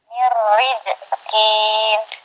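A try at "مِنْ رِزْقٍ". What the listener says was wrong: Riz, bukan riz. Jangan lari ke jim. Za, riz. Jangan panjang. Mir rizkin gitu. Jangan kin gitu. Pendek.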